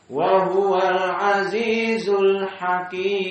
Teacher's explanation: karena kita ingin berhenti di al-hakim, maka aziznya hanya dua harakat. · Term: mad arid lis-sukun